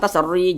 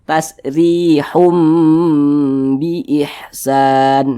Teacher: huruf ro memiliki tanda baca kasrah maka dia dibaca tipis dibaca tarkik huruf rnya kita tipiskan